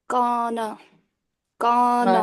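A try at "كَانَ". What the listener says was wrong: माशाल्लाह, काना, ठीक है। इसको कहा तो बारीक है, इसको कौना इसको ज्यादा मत कीजिए, सिर्फ नॉर्मल काना। सिर्फ यहाँ पे मद का ख्याल रखना है, ठीक है।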